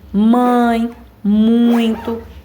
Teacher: ditongos nasais parte do som sai pelo nariz